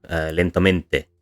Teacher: The first syllable is weakly stressed, the second is unstressed, the third is strongly stressed, and the fourth is unstressed. And when we use Roman letters, you can clearly see that even in writing, the stressed syllables are longer than the short syllables.